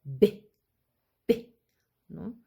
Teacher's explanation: choque por ejemplo de labio superior con el labio inferior